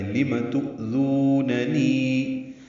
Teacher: حمزہ ساکن روایت حفص میں جھٹکے سے پڑھا جاتا ہے